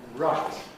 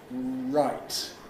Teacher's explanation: Most English people round their lips for R.